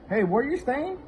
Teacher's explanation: it's very high pitch or it's a rising intonation